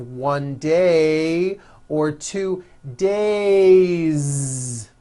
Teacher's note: It's not days, unvoiced. It's days with a voiced Z ending.